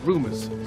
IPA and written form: ˈruː.mərs (rumors)